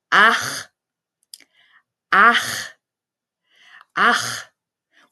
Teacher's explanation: After back vowels A, O, and U, sh pronounce a more guttural, raspy sound from the back of the throat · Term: hard sh sound